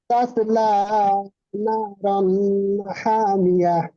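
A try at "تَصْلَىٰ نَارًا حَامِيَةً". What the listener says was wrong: নারন ফের গুন্না হয়ে যাচ্ছে।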